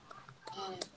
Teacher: To make the sound, the tongue touches the upper palate, and you hear these vibrations. So as it touches the G, hold the tongue in. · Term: G sound